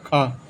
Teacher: अघोष महाप्राण में आता है ख